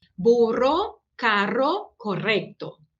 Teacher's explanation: Burro, carro, correcto. Então, sempre forte e vibrante. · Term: Doble R